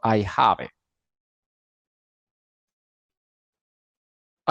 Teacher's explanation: I have I have pero la vocales no la pronunció y la palabra del verbo have terminaría fonéticamente en la v de vaca y le pegó el artículo indefinido